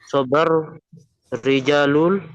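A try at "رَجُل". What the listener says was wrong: Bukan Rijal loh. Kalau Rijal panjang ya ada alif. Ini kan tidak ada alif.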